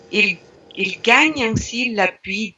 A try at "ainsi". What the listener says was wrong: Ainsi, il n'y a pas le N. Voilà, on a oublié le N.